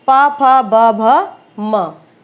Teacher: ओष्ठ है, ओष्ठ है, आप सिंपल सी बात है, उच्चारण के समय क्या होगा, दोनों ओठ आपस में स्पर्श करते हैं, प फ ब भ म, ये भी ओष्ठ है क्योंकि ये आपस में स्पर्श करते हैं।